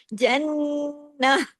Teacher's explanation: ہاں کی آواز گلے میں آنی چاہیے، ہم نے عارضی سکون کیا ہے، اس لیے ہم نے یہاں پر زیر کو روک دیا بس۔